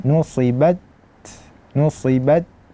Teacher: kita kasih dulu hak syiddahnya yaitu tertahan suara nusibat kemudian kita kasihkan hak dia yaitu hak hams yaitu mengalirnya nafas jadi nusibat nusibat jadi jangan baca nusibat habis itu tidak dilepaskan